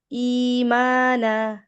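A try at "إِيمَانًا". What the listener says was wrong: মাদ লাস্টেরটা blur হয়ে গেছে না না ইমানা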